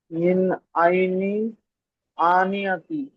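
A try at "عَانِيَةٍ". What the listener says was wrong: মিন আইনিন আনিয়াতিন, এই যে এখানে আ টান দিবেন একটু। হামজা খাড়া জাবার আছে, খাড়া জাবার আলিফ মাদ্দার সমান।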